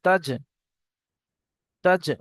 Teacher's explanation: জিমের উপর সাকিন আছে ঝাটকার সঙ্গে কলকলা করে পড়তে হবে